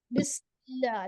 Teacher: لام سے پہلے زیر ہے، باریک پڑھیں گے